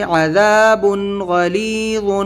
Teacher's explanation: تنوین ہے، اس کے بعد میں غین ہے تو اس کو ہم ظاہر کر کے پڑھیں گے